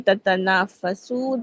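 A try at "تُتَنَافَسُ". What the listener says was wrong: तुतनाफसु। जी पेश नहीं, आप जबर बोल रही हैं।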